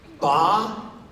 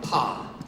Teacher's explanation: the P part is called a voiceless consonant there is no vibration the vibration of the vocal cord starts when you get to the vowel part of the syllable · When you say ba, your vocal cords start vibrating right at the very beginning. When you say pa, the P part is called a voiceless consonant. · when you get to the vowel part of the syllable So ba and Pa differ by ba is voiced PA is not